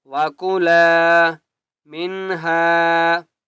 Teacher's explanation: لام کو ایک الف کی مقدار کھینچ کر پڑھیں گے ، وَكُلَا مِنْهَا، را کو بھی موٹا کریں گے اور غائن